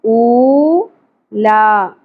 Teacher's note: واؤ حرف مدہ ہے ایک الف کے برابر کھینچیں گے او لا کھڑی زبر کو بھی ایک الف کے برابر کھینچیں گے